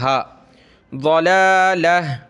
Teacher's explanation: جب رکتے ہیں تو گولتا جو ہے ہا میں کنورٹ ہو جاتی ہے، ہا بن جاتی ہے، میں نے یہاں سانس لے لیا، وقف کر لیا، تو میں نے اس کو کیا پڑھ لیا؟